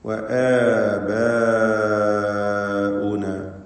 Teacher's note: ആബാഉന എന്നതിലാണെങ്കിൽ മദ് മുത്തസിൽ വാജിബ് വരുന്നു അലിഫിന്, ബായിന്റെ അലിഫ്. നിർബന്ധമായും 4-5 ഹറക്കത്തിന്റെ അളവിൽ അതിനെ ദീർഘിപ്പിക്കണം.